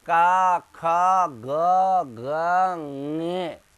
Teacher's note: किससे, कंठ से। तो क वर्ग का उच्चारण स्थान तो हो जाएगा कंठ।